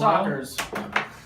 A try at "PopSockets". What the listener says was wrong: Pop socket. It's not a pop and soccer.